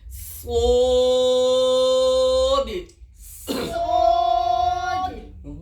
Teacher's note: صاد تھوڑا سیٹی بھی لگاؤ, موٹا بھی کرو